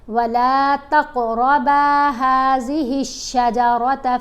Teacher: ہم نے کلکلا کرنا ہے، قاف اور را کو موٹا پڑھنا ہے